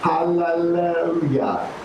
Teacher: You hear all those L's, you hear that, the tongue is flapping, right?